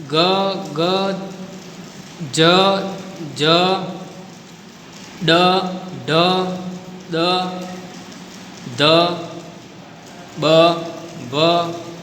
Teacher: ઉચ્ચારણ સમયે જ્ઞાનતંત્રી સામાન્ય કરતાં વધારે પ્રમાણમાં કંપે ત્યારે તે ધ્વનિ ઘોષ કહેવાય છે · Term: ઘોષ ધ્વનિ